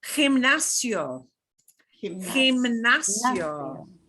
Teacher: So the emphasis is on the NAS